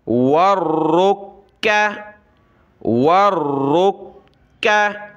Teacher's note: را کو موٹا پڑھنا ہے، کاف کو باریک